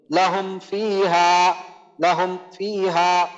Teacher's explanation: মিম সাকিনের পর ফা আসছে তো মিম সাকিনকে নরমাল ভাবে পড়তে হবে কোনো রকম গুণনা করার প্রয়োজন নেই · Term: মিম সাকিনে ইজার